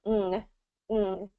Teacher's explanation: You don't fully pronounce that G at the end. It's more back of the throat, ng. Okay, so the N is not in the front of the mouth, it's in the back, where the G is usually pronounced, and then it's ng.